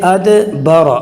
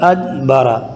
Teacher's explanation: اگر میں قلقلہ نہیں کروں گا تو میں یوں پڑھوں گا ادبر، تو یہ دال کے بجائے تا کی آواز آئے گی، جو بہت بڑی غلطی ہے۔